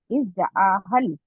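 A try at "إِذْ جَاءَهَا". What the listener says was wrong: इज जा हल, आप आ को लंबा खींचते हैं और जा को छोटा करते हैं, जा हल है। जा हल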